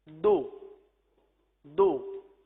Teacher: تو پیش بھی ہونٹ گول کر کے ادا ہوتا ہے، تو اس کی درست ادائیگی ہونی چاہیے ہونٹ گول کر کے.